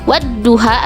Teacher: Wadduha antara wawu dan zo ini ada alif lam mati yang tidak dibaca karena dimasukkan ke dalam huruf zo yang ada di depannya